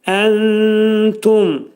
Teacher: Entumda nun təyə yetişir ixva. İxva etdikdə azacıq da olsa tənin məxrəzi eşidilməlidir.